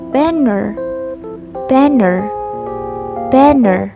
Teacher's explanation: banner has two syllables and the first syllables was stressed and the second was unstressed.